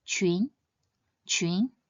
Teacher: When pronounced using the second tone, it means skirt or dress